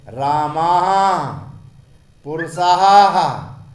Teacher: दीर्घ स्वर को थोड़ा सा जोर देकर विसर्ग का उच्चारण हा के रूप में होता है, क्योंकि हा और विसर्ग का उच्चारण स्थान कंठ है।